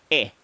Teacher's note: the short e sound is known as the close mid front unrounded vowel sound